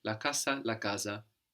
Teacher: that single s that comes between vowels you can hear more like a Zed sound or an S sound depending on the dialect